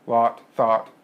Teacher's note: you're probably not going to have a distinction between the vowel in lot and the vowel in thought. So they probably both sound kind of like ah to you. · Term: lot and thought vowels